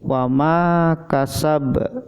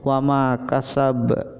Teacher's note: Kalau ba-nya adalah huruf qalqalah, jadi dibaca sedikit memantul. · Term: qalqalah ausat